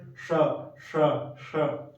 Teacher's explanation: मूर्धा पे एकदम एकदम ऊपर वाले भाग पे, जैसे जहाँ ट ट बोलते समय जीवा कहाँ लग रही है आपकी, वहां से इसका उच्चारण करने का प्रयास करिए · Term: मूर्धन्य सकार